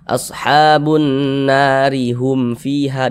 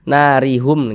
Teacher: Dibaca tarkik, dibaca tipis kalau kita sambung